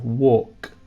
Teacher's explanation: Notice the spelling of walk. We have an L, but you don't hear the L.